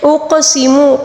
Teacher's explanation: قاف کے اوپر جو ساکن ہے اس کو قلقلے کے ساتھ پڑھیں گے